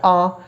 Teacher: विवृत स्वर एक ही होता है आ, मुंह खुला ही रहता है। ठीक है, जिह्वा बिल्कुल भी ऊपर नहीं उठती, इस स्वर के उच्चारण में बिल्कुल भी ऊपर नहीं उठती।